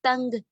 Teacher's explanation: ہم نون کو نہیں ادا کر رہے ہوتے